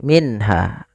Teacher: nun sukun bertemu dengan huruf ha suara nunnya harus dibaca dengan jelas tidak boleh ditahan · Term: izhar halqi